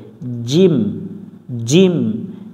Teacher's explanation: জিম অক্ষর জিহ্বার মাঝখান থেকে শক্ত করে পড়তে হয় জিম জিম এটা জিম পাতলা করা যাবে না জিম অক্ষর জিহব্বার